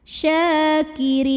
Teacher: Mad tabi'inya adalah ya sukun yang didahului kasrah, kemudian huruf yang disukunkannya nun. Jadi ri-nya ini panjang, boleh 2, boleh 4, boleh 6 harokat asal konsisten dalam sekali bacaan. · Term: mad arid li sukun